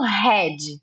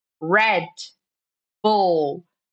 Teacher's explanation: Não tem o I depois do D. Red e não red.